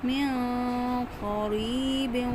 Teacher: قاف موٹا کیا، یائے مدہ ایک الف کے برابر میں نے کھینچ کر پڑھے